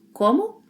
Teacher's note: Say it with a rising intonation.